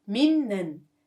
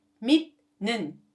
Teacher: when 티귿 받침 meets with 미음 or 니은 consonants, its pronunciation will be changed into 니은 받침